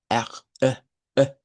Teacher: este es un sonido consonante que se le conoce como, bueno, en el inglés se le dice que es un glottal stop. Es como eh.